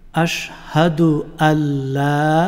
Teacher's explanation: এখানে আশহাদু আনলা না হয়ে আল্লাহ হবে